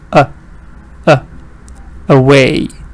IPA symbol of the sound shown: ə